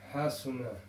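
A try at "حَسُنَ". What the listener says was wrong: Again, it's got to be quick. Hasuna.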